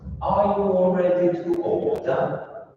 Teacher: you want to keep your pitch straight until you reach the important word, and then it goes up.